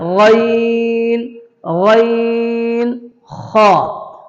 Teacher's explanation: حلق کا جو آخری حصہ ہے وہاں سے کیا نکلے گا غین خا